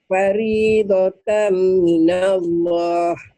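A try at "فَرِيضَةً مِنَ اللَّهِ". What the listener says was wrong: Masih. Minallah. Minallah. Jangan minallah. Kalau minallah itu hak kecil. Nih ya, dengerin ya. Faridatam minallah. Minallah. Minallah. Jangan minallah. Itu hak kecil. Alhamdulillah itu hak kecil. Ini hak gede.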